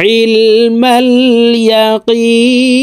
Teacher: এই এখানে 3 আলিফ টেনে নুনকে সাকিন করতে হবে, কারণ মদের হরফের বামের হরফে ওয়াকফ হইলে মধ্যে আরজি 3 আলিফ টানিয়া পড়িতে হয়।